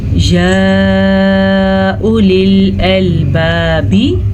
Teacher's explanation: वाव के ऊपर कोई भी हरकत नहीं है तो वाव नहीं पढ़ी जाएगी